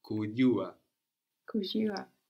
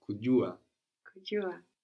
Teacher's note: having the tongue up against the roof of the mouth with a lot of contact there and without the friction J quality. So kujua, which might sound like a Y, but the Y is Y, no?